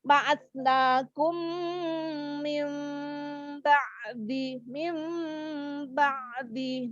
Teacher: Cara membacanya maka mim yang sukun dileburkan terhadap mim yang berikutnya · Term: idgham mimi